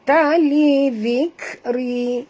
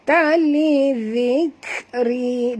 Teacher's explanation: zal sini sentil lidah menyebutnya kerana makhraj zal adalah di hujung lidah. Ta li dhikri, dan bunyi hamas pada kaf.